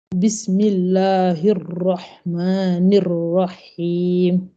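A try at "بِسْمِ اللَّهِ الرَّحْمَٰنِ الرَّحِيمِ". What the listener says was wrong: Voilà, c'est mieux, mais il faut se forcer à gonfler plus encore. Ar, ar, ar. Voilà, ar. Faut essayer de faire.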